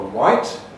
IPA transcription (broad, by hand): waɪt